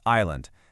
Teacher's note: See, no S sound in there at all. It's just island.